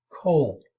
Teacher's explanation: deletion of the second consonant in final consonant clusters